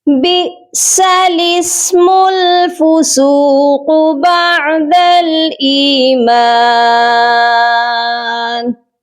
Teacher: یہاں پر حمزہ ساکن ہے، اس کو جھٹکا دیں گے